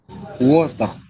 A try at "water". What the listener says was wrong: I-nya itu keras. Yang diucapkan. Nah, itu nggak boleh ya ketika berbahasa Inggris. Water, ya. Jadi water. E-nya itu nggak perlu ditekan gitu.